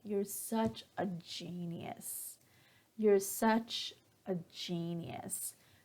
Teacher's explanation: So here, when I say it with a falling intonation at the end, you're such a genius, I don't really mean that you are a genius. I'm just being sarcastic.